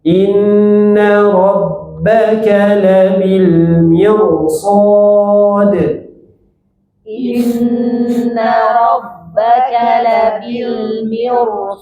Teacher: Maka mirsad di sana tebalkan ra-nya. · Ro sukun sebelumnya kasroh bertemu dengan huruf tebal, maka ro-nya dibaca tebal.